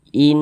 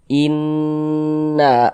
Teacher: kita tahan, kita panjangkan sejenak, kita gunahkan atau kita dengungkan. Inna asha ha dibaca panjang. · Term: ghunah musyaddadah